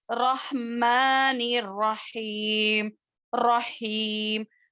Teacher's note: میم کا مخرج کیا ہے؟ گیلے سوکھے ہونٹوں سے ادا ہونے والا ہے